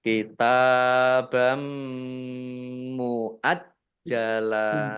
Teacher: fathah tanwinnya tidak dibaca langsung masuk ke mim ditandai dengan mimnya ada tasdidnya mim tasdid dibaca Dibaca ghunah atau mendengung ditahan dua harakat kitabam · mim tasdid dibaca Dibaca ghunah atau mendengung ditahan dua harakat kitabam muajjala jimnya dibaca dobel ada tasdidnya kalau Jim tasdid itu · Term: bacaan Idgham, gunnah